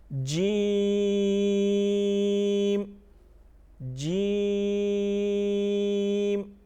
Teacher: جیم میں ہم 5 الف کے برابر مت کریں گے. 5 الف کے برابر اس کو کھینچ کے پڑھیں گے.